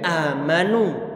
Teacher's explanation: untuk bacaan mad badal ini dibaca dengan kadar 2 harokat